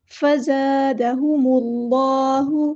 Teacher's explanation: اللہ کا جو لام ہے یہاں پہ پورا ادا کرنا ہے، موٹا ادا کرنا ہے کیونکہ اللہ کے لام سے پہلے پیش آیا ہے، اللہ ایسے · میم کو ہم نے لام کے ساتھ ملا دینا ہے، حمزۃ الوصل ہمارا ڈراپ ہو جائے گا